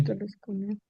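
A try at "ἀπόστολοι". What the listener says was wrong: Oye, pero aquí añadiste una vocal larga al final y no moviste el acento, no es apostolo. No, es que esta en nominativo no se considera vocal larga. Entonces el acento sigue estando acá. Apóstolos, apostolo, apostolo. En plural, apóstoloi, apostolon, apostolois, genitivo y en dativo, ¿verdad? Pero en nominativo no se mueve el acento, porque no se considera vocal larga. El hoy del nominativo no se considera vocal larga y entonces el acento no se mueve.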